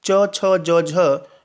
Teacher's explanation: स्पर्श संघर्षी वर्ण होते हैं